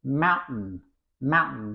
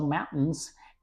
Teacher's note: T is a kind of glottal T. I mean that in American English, okay, normally T is pronounced like this: mountain, mountain.